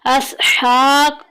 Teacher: हा के ऊपर खड़ी ज़बर आ गई, इसको एक अलिफ के बराबर लंबा करेंगे। हा और हा की आवाज़ में फ़र्क होगा।